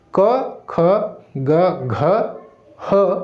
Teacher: आइए देखते हैं, तो कंठ से किसका, तो कंठ से होता है अ, आ, उसके बाद फिर आपका क ख से लेकर के घ तक, और उसमें शामिल है ह, क ख ग घ ह, उसके बाद अ और आ, ये जो है वो कंठ से है